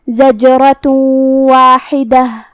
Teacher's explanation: ادغام کا معنی ہے حرف کو حرف میں داخل کرنا تو ہم یہ تنوین کو واو میں ملا کے غنہ اور تشدید کے ساتھ یہ حکم کو ادا کریں گے